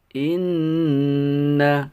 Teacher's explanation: hukum gunnah, dibaca mendengung dengan panjang harokat, ditahan 2 harokat · Maka apabila kita dalam membaca Al-Quran ada huruf nun atau mim yang bertasdid, maka hukum bacaannya adalah dibaca gunnah, yaitu kita dengungkan nanti dengan panjang harokat 2 harokat.